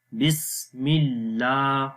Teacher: اللہ کے نام سے پہلے زیر آ گئی تو اللہ کا نام باریک پڑھیں گے ، بسم اللہ، اور یہاں لام کے اوپر کھڑی زبر ہے